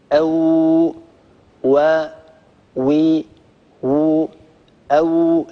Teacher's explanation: الواو تخرج بانضمام الشفتين إلى الأمام مع ارتفاع في أقصى اللسان · انضمام للشفتين إلى الأمام وارتفاع في أقصى اللسان من غير تقعر، ويمر الصوت من بين الشفة العليا والشفة السفلى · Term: الواو غير المادية